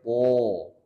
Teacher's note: To itu ujung lidah bertemu dengan pangkal dua gigi seri atas, kemudian ditebalkan. Di pangkal lidahnya naik ke atas kan?